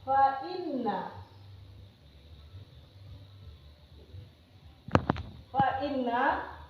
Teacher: Fa inna berarti dia dengung atau gunnah karena nun bertemu tasdid atau disebut musaddah.